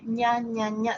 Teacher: Si ustedes dicen ña, ña, ña, ña, ña, ña, va a ser el paladar duro. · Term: sonido palatal